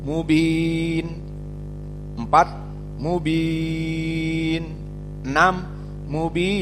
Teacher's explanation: Maka mubin di sini ya sakinah mad tabi'i asalnya, namun sebelum akhir dan nunnya disukunkan menjadi mad arid li sukun, dibaca 2, 4 bahkan 6.